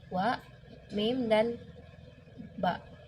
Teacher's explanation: konsonan bilabial, yaitu konsonan yang didapat dengan mempertemukan kedua belah bibir. Huruf yang keluar dari konsonan bilabial ini ada huruf wa, mim, dan ba.